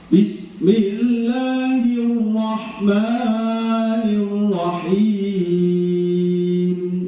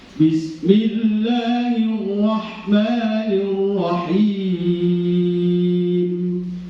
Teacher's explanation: Sama, semua mat tabi'i ya segitu semua. Tidak boleh ada yang lebih panjang.